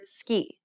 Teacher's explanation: Notice how the K in the word ski does not produce a burst of air. This is how the Portuguese C sound should be pronounced.